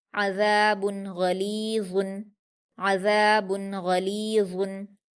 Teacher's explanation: अज़ाबुन गलीज़ुन, गईन पर हरकतें जल्दी पढ़ेंगे और पुर पढ़ेंगे। लाम पर या मद्दा है 2 हरकत खींचकर पढ़ेंगे। वा पर तनवीन है, पुर पढ़ेंगे और जल्दी पढ़ेंगे।